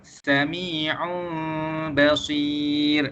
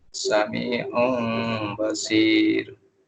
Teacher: Kalau kita jumpa tanwin selepas dia huruf ba, kita terus tukarkan tanwin tu kepada huruf mim.